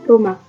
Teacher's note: 19. H dengan bunyi frikatif glotis tak bersuara